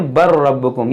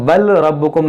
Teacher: یہ لام کی آواز نہیں آئی، لام یہاں پر سائلنٹ ہو جائے گا